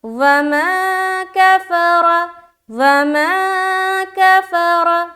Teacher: کھینچنا صرف ماں میں ہے, باقی سب کو جلد ادا کریں گے, واو کو بھی اور کفارہ کو بھی.